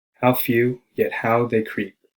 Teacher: how few yet how they creep with emphasis on words few how and creep